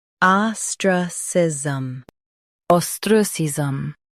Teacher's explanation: Stress the ah and keep sism soft.